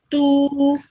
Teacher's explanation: Because it is followed by a vaw madda, you prolong that tu sound for 2 seconds.